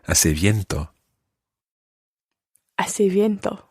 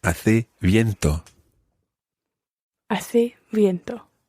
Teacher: In some parts of Latin America in particular, you will hear viento with a proper V sound.